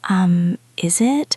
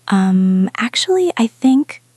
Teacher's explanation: It is the um of authority. It is long, loud, and low.